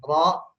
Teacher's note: baik ro maupun ru, pangkal lidahnya naik, jadi tebal.